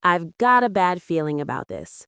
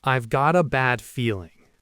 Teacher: For connected speech, let's look at I've got a bad feeling. Native speakers often don't say got a. They blend it together to sound like gotta. So it becomes I've got a bad feeling about this. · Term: linking